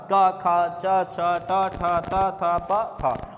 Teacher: ऐसे व्यंजन वर्ण जिनके उच्चारण में बिल्कुल भी गूंज, कंपन पैदा नहीं होता है सर, उन्हें बोलते हैं अघोष व्यंजन।